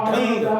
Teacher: जिसे कहते हैं ढंग, तो ढा में अंग की मात्रा आ रही है, तो ढंग कहेंगे तो नासिका में आवाज गूंजेगी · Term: अनुस्वार